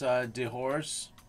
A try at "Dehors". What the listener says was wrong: I would just Dehors. Dehors. You don't have to say the S on the end.